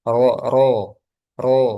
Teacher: Ketika fathah dia tebal. Nah, tafkhim.